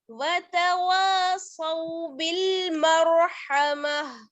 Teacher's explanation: میم کو را سے ملائیں گے، را ساکن ہے، اس سے پہلے زبر ہے، را کو موٹا پڑیں گے